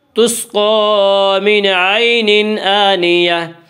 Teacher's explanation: جب وقف کریں گے تو گول تا وقف کی صورت میں ہائے ساکنہ بن جاتی ہے۔